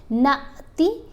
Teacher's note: الف کے اوپر جب بھی کوئی موو آ جائے تو وہ پھر الف نہیں پڑھا جاتا، حمزہ پڑھا جاتا ہے۔ اب ہم نے نون کو حمزہ سے ملانا ہے تو نون کو ایسے پڑھیں گے جیسے جھٹکا دے کر پڑھتے ہیں